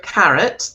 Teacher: That second syllable there is not what we call a strong vowel, which is like an o, a, e, I, o, u. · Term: schwa